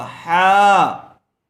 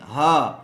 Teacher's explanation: इसको हलक से निकालना होगा हा, और ये छोटी हा, इसको नॉर्मल आवाज़ में निकालेंगे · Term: बड़ी हा